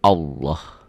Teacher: lafaz Allah dibaca tafkhim, tebal, berbunyi Allah. Jadi kalau mengungkapkan ini seperti ada W-nya ya.